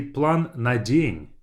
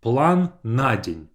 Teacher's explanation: as if на день is one word and I put the stress on the first a